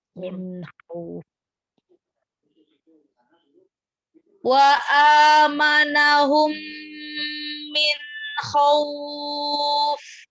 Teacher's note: Tidak digunnah, tidak dimasukkan. Min izhar itu jelas.